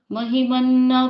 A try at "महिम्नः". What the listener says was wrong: यहाँ पर महिमना में थोड़ी दिक्कत हो रही है सबको। महिम्नः महिम्नः ना में विसर्ग है नः ऐसे।